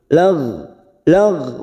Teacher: bukan qalqala kita tahan jangan sampai memantul